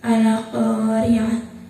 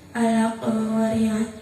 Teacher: Di situ ada ro yang berharokat kasrah, maka cara bacanya tipis. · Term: ro tarkik